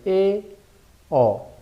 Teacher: Y según el ángulo de abertura, pues en la E y en la O, la boca está a medio abrir. E, O. Por eso estas son las vocales medias.